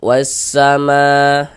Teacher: Nah, jadi karena nggak ada tanda bacanya, maka jangan bingung. Jadi cara membacanya itu dari wa langsung masuk ke huruf syamsiahnya ini, ke huruf sinnya ini begitu. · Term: idgham syamsiyah